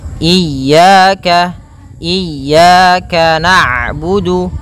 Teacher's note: pada lafal ya ada mad thabi'i berupa fathah bertemu alif maka dua harakat